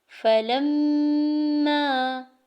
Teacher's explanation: لام کو جب میم مشدد کے ساتھ ملاتے ہیں تو آواز ناک میں 2 سے 3 سیکنڈ تک روکتے ہیں اور اسے غنہ کہتے ہیں